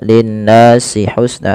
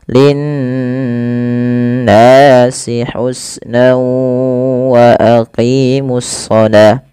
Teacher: Pada lafal nun berharakat tasydid itu wajib ditahan suara n ya. Nah, ini yang kita namakan dengan gunnah.